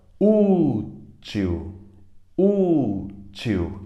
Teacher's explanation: útil útil a mais forte é o u paroxítona